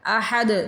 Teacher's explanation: دال پہ قلقلہ ہے، احد، دال کو ہلا کے پڑھنا ہے